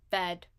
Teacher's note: A voiceless labial dental fricative followed by a high-ish front vowel, lax high-ish front vowel, unrounded, and then at the end there is a voiced alveolar oral stop